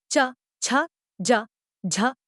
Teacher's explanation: वायु घर्षण करती हुई ही मुख से बाहर निकल पाती है इन व्यंजनों के उच्चारण में पहली स्थिति स्पर्श की होती है और दूसरी स्थिति संघर्ष की हिंदी वर्णमाला में चव के सभी व्यंजन इस वर्ग में आते · स्पर्श संघर्षी कुछ व्यंजनों के उच्चारण में स्पर्श तथा घर्षण दोनों प्रयत्न दृष्टिगत होते हैं। इनके उच्चारण के समय इनमें उच्चारण अवयव उच्चारण स्थान को स्पर्श करने के बाद दूर तो हटते हैं, किंतु फिर भी इतने निकट रह जाते हैं कि वायु घर्षण करती हुई ही मुख से बाहर निकल पाती है। इन व्यंजनों के उच्चारण में पहली स्थिति स्पर्श की होती है और दूसरी स्थिति संघर्ष की। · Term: स्पर्श संघर्षी व्यंजनों